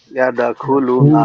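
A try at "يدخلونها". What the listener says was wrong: লুতে টান হবে, পেশের বাম পাশে যজমালা ওয়াও, এজন্য একটা টান হবে।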